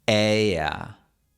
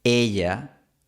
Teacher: El resultado es que terminas pronunciando ella, lo cual suena súper gringo. La pronunciación nativa es ella con un poquito de fricción.